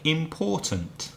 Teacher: 3 syllables. Which one is stressed? Which one is strong? The middle, the second one.